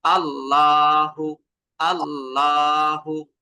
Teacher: আল্লাহ শব্দের যে দ্বিতীয় লামটা রয়েছে এই দ্বিতীয় লামটাকে আপনাকে পুর বা মোটা করে পড়তে হবে · এই যে জবর থাকার কারণে আল্লাহ শব্দের লামটাকে আমরা মোটা করে উচ্চারণ করব